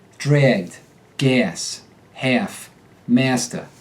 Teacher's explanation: the short a occasionally becomes air · A select number of short A sounds take on the air sound, which is like the vowel in air, without the R.